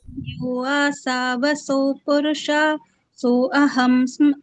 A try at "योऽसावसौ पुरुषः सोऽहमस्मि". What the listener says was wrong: आ नहीं आएगा, बस यहाँ पर आपको स्पेस देना है। You will have to give space there. हम अस्मि यो सावसौ, यो सावसौ पुरुषः सोऽहम् अस्मि।